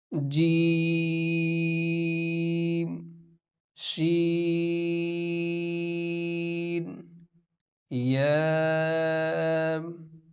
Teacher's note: जुबान के दरमियान और तालू के दरमियान से यह हरूफ अदा होते हैं · زبان کے درمیان اور تالو کے درمیان سے یہ حروف ادا ہوتے ہیں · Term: हरूफ शाजार, حروف شاجادیہ